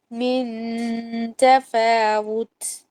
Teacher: تا کی باریکی اور ہلکا پن جو ہے پتہ چلنا چاہیے